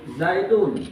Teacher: Zaidun ini seperti ada suara nun yang disukun. Zaidun, padahal tulisannya itu adalah harakat tain, artinya domah tain.